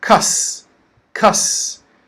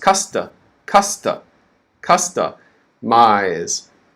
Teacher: This word, customize, has 3 syllables. The first syllable is stressed. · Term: major stress